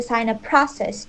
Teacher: I would stress sign up more than process in the sign up process, most likely, depending on what we're trying to emphasize.